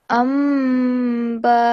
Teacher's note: you have to prolong the nasal sound because after the meme comes a ba